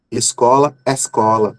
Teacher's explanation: em alguns lugares o O e o E, que são fechados, se tornam abertos na pronúncia ali